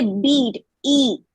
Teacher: when we say bead, E, it's a little longer one. So we call it as a tense vowel.